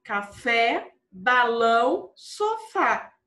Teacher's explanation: Então, a última sílaba é a mais forte e tem acento, certo? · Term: oxítonas